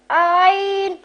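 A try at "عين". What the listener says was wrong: دیکھو آئین نہیں کہنا، آ کی پہلے آواز نہ آیا کرے.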